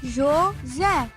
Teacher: A última sílaba é a mais forte. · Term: sílaba tônica